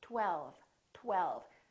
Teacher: me 12 12. there's a lot of movement that happened here first there was a tongue touching behind my upper teeth and then we round our lips for the w and then the tongue goes up again for the l